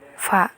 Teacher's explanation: bibir bawah bekerja sama dengan gigi atas untuk menghambat udara yang masuk dari paru-paru. Huruf yang termasuk dalam golongan ini adalah fa. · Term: bunyi labiodental